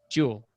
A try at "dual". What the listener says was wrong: It sounds like you're saying jewel.